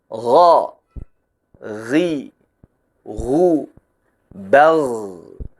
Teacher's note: pada aliran udaranya huruf k udaranya mengalir tidak menggetarkan pita suara huruf ghain udaranya tertahan di pita suara sehingga pita suara bergetar saat mengucapkannya dan tidak ada hembusan napas yang deras